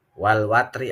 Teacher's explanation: alif lamnya jelas. Namanya alif lam qamariyah.